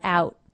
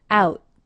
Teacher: He does not release it out. He simply brings his tongue into position for the T, out, cutting off the sound. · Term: stop T